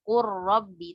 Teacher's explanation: Ini diidghamkan juga nih, idgham kamil. Qur rabbi, tapi idghamnya tanpa gunnah juga sama seperti mil ladunhu.